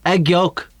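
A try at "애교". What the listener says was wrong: Yeah, without the K. Aegyo,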